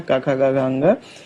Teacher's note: ये जो होता है का, खा, गा, घा, अंगा, इसमें फर्स्ट, थर्ड और फिफ्थ ये अल्प प्राण होता है। अब उसके बाद में महाप्राण को देखें तो महाप्राण में जो होता है ये जो बचा हुआ है सेकंड और फोर्थ बचा हुआ है।